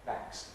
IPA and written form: bæks (backs)